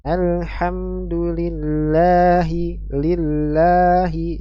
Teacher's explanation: Mad thaii bacaan panjang dua harakat terjadi pada huruf lam pada lafaz jalalah Allah